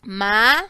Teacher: En la palabra maletín, la fuerza de voz se la estoy dando a la sílaba tin. Es decir, que es la última sílaba. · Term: sílaba tónica